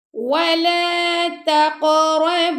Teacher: قاف پر کلکلا کیا ہم نے اور ہن پہ ہم نے غنہ کیا